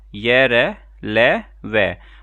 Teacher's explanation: उच्चारण के समय जो हमारी जीभ है वो मुंह के किसी विभाग को पूरी तरह स्पर्श नहीं करती। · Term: अंत्यस्थ व्यंजन